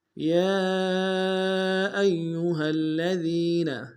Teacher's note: یا ایھا الذین، یا ایھا الذین، یا کے اوپر کھڑا زبر ہے، کھڑا زبر کے اوپر مد منفصل ہے، کم سے کم 2 الف دال میں کھینچیں گے۔ حمزہ کو یا کے سامنے لائیں گے، یا کے اوپر تشدید زور دیں گے۔ ہا کو لام کے سامنے لائیں گے، الذین کے لام کے اوپر تشدید زور دیں گے۔